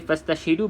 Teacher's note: fastashhidu bermaksud tidak boleh kita sebut hamzatul wasal dekat sini. Kalau tuan-tuan dan puan-puan perasan, di sini ada kita panggil hamzah wasal.